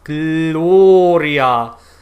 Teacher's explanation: the l in german is made by placing the tongue between the teeth not only not behind the top teeth but between the teeth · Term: the german l